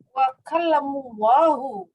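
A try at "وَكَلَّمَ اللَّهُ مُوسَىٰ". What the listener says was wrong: Jangan kalamu fiil madi itu. Wa kallama kan fa'ala. Kan fa'ala, kallama. Wa kallamallahu Musa, baru masdarnya.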